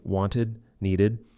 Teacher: For ed endings in past simple or participles, there are three pronunciations. Id, used after T or D